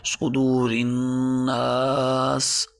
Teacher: نون پر غنہ کریں گے، مشدد بھی ہے، ایک الف کے برابر کھینچ کر بھی پڑھیں گے۔